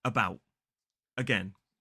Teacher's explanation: Both of these two words, the second syllable is stressed.